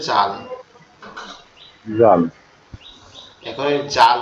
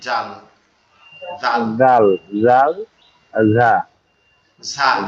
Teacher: উচ্চারণ হবে জিহ্বার আগা দিয়ে উপরের দুই দাতের আগার সঙ্গে উপরের দুই দাঁতের আগার সঙ্গে জিহ্বার আগান লাগবে।